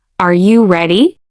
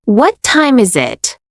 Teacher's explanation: Rising intonation used for yes no questions. Falling intonation used for wh questions.